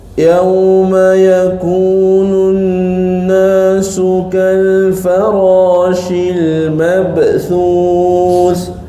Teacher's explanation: Jangan baca yauma yakununna. Nunna tu dengung. Macam dengung tapi dia tak panjang. Dia kena dua harakat. Dia ada wajibul ghunah di situ.